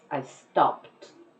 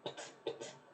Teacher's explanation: The E is not even pronounced. It's just pt, pt. I stopped. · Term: It sounds like a T